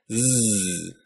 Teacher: putting your hand on your throat and saying Z you should feel buzzing in your throat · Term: voiced consonant